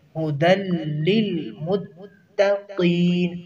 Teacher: جو پہلے لام ہے اس کو مشدد ہے، تو اس کی ادائیگی کے وقت اس میں 2 الف پڑھیں گے، یعنی 2 الف کے برابر اس کی ادائیگی کریں گے۔